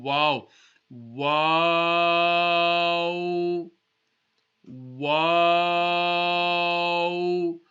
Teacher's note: the top teeth should not touch the lips the lips should not even touch each other they should be rounded